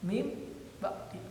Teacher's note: nun mati diidghamkan ke huruf ba, bunyinya menjadi huruf mim. Asalnya min ba'di menjadi mim ba'di, nunnya hilang karena diidghamkan ke ba, jadi huruf mim. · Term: iklab